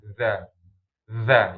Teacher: Jadi gesekannya maksud digesekan ujung lidah sama ujung gigi seri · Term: huruf zal